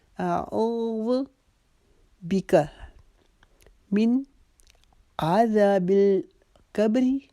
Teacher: او کو ہم ایک الف کے جتنا لمبا کھینچ کے پڑھیں گے، ذو کو لمبا نہیں کریں گے